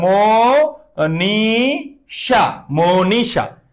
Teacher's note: অয়ের পরে দীর্ঘ ইকার থাকার কারণে অ উচ্চারণে ও হয়েছে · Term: সংবৃত